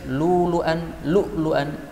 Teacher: maka hamzahnya yang pertama boleh diganti wawu. Kalau hamzah kedua tetap harus ada hamzahnya.